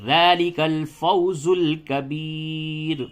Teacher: تو یہاں پہ یہ ما قبل والا قاعدہ نہیں دیکھا جائے گا، بلکہ یا ساکن ہے اگر را ساکن سے قبل اگر یا ساکن ہے تو اس را کو باریک ہر حالت میں پڑھتے ہیں. تو یہاں پہ ہر حالت میں را کو باریک میں پڑھیں گے وقف میں